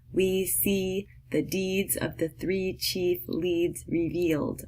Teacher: your mouths gonna be pretty tight because it's a very high in front vowel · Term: EE sound